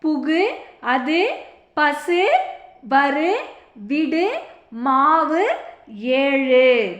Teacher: தனிக்குறில் எழுத்தை அடுத்து வரும் வல்லின உகரங்கள் ஒரு மாத்திரை அளவுக்கு முழுமையாக ஒலிக்கும்